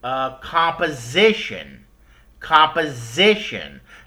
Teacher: The zip part gets stress